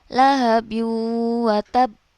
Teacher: Qalqalah Akbar itu ada penekanan terlebih dahulu baru di pantulkan contohnya lahabu watab pernah ada penekanan dulu baru di pantulkan lahabu